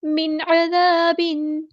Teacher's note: अइन को मुस्तहलक यानी middle throat से अदा करना है, ज़ाल बारीक अदा करना है।